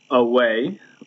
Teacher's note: Unstressed is the first syllable, and then stressed is the second syllable. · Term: iambic